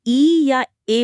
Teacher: जब हम इ या ए बोलते हैं जो अग्र स्वर है। तो जीभ आगे की तरफ आती है। हां। जीभ का आगे वाला हिस्सा थोड़ा ऊपर उठता है।